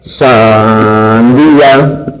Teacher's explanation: Esa I, por ser tónica, tiene que mantener una intensidad y una largura determinada para poder llevar el acento. y por lo tanto no se puede debilitar y no puede cerrarse más, al contrario, esa I es más abierta que las I's átonas, ¿vale? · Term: hiato